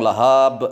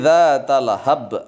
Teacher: harus Qalqalah Qalqalah Kubro memantul yang besar zat Allah hap jangan panjang-panjang lahap salah tetapi zat Allah hap